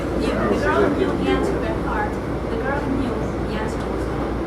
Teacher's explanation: So it's not a pitch change. What we do is extend the vowel just before a phrase boundary. So the knew in this case, in the first sentence we'd say the girl knew the answer by heart.